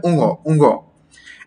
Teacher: যেমন উ এর মধ্যে আমি উ করছি আর নাসিক্য ধ্বনি দিয়ে এটাকে বের করে ফেলছি। অর্থাৎ এখানে না জিউভার কোন কাজ থাকছে না আমাদের দাঁতের না অন্য কোন কিছুর কাজ থাক।